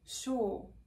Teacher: This diphthong, ua, is like dying out, especially in those short words like sure.